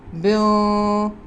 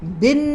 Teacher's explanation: ہماری زبان جو ہے وہ نون کے مخرج پر نہیں لگے گی بلکہ ہم نے زبان کو پیچھے روکنا ہے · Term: اخفاء کا غنہ